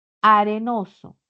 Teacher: Estas consonantes van hacia la zona de los alvéolos. Son alveolares. Para la punta de la lengua hacia esa zona, ¿no?